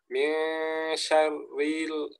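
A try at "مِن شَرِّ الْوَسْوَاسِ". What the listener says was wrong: Sini lebih jelas lagi. Syah. Masih tebal. Tebalan. Syarri, coba.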